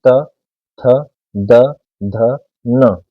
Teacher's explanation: जीवा हमारे दांत से स्पर्श करेगी, ऊपर वाले दांतों से।